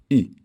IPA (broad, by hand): ʏ